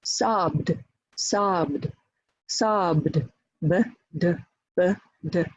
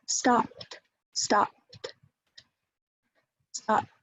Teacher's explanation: And stop p, p, p, is voiceless, and t, t, t is voiceless.